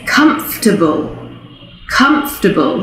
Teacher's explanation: so we actually lose a syllable there